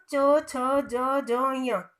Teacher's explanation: चवर्ग का कहाँ से हुआ, तालु से